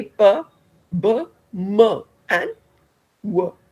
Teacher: you're making use of your two lips when you say p b m and W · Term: bilabial